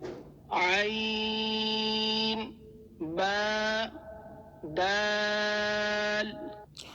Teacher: اس میں عین کو آپ نے حلق سے پڑھنا ہے